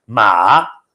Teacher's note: with a high pitched tone is mother. Ma with it's called a third tone, with a tone that goes down and then comes up, is horse.